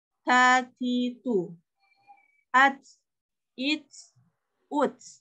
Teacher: huruf hamz itu ada sedikit keluar anginnya ya, tapi tidak boleh berlebihan.